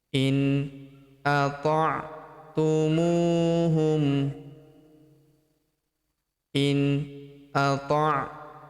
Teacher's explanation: Huruf mu kita panjangkan 2 harokat karena terdapat waw sukun di depannya